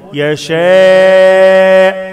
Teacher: يشاء مد واجب متصل أربع حركات